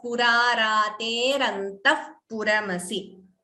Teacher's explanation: Here visarga followed by pa upadhmaniya.